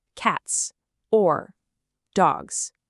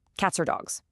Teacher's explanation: The S at the end of cats links right into or. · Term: linking